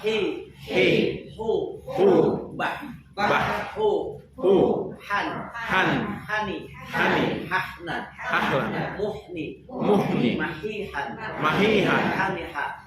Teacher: Di tengah-tengah tenggorokan, wastul halqi. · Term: huruf H